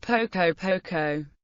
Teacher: An adverb has rising tone